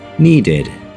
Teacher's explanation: ED sound is pronounced as id, and it makes its own syllable